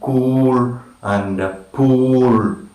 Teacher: back, close, rounded, and again long, like in cool and pool.